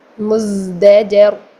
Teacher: ذا میں جو ہے وہ سیٹی تو پائی جاتی ہے لیکن ہمس پایا نہیں جاتا، اس لیے وہ سین اور صاد سے ڈفرینٹ ہو جاتا ہے۔